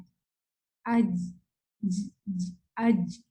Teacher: آپ فیل کریں, سب فیل کریں کہ اس طرح سے پڑھنے سے آپ کی زبان کا جو مڈل پارٹ ہے وہ اوپر کو جا کے ٹچ ہوتا ہے, اور پھر وہاں سے آواز ریلیز ہوتی ہے